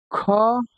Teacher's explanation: बात की जाए तो अल्प प्राण हमारा क होता है लेकिन ख हमारा अघोष और महाप्राण हो जाएगा